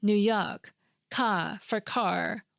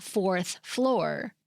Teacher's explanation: local New York accent features such as dropping the R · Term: R dropping